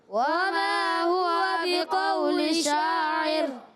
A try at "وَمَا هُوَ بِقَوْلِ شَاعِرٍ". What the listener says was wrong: پھر کسی نے را کو پر کیا شاعر ہوتا ہے شاعر شاعر نہیں شاعر ادھر سے آواز آ رہی ہے زیادہ قلیلا ما تؤمنون اب ملا کر جب پڑھیں گے شاعر اخفا غنہ کریں گے وما هو بقول شاعر قلیلا ما تؤمنون